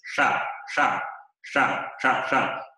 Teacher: se lleva hacia atrás la lengua y se enrosca un poquito y y hace este sonido retroflexo si fuera una sa eh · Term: retroflejo